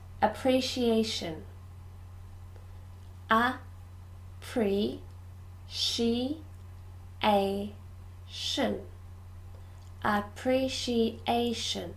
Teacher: Number 4, this is quite difficult. There are 2 sh sounds and 5 syllables.